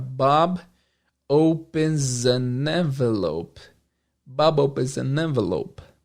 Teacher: E entre a palavra opens e an envelope, acrescenta-se um som de Z.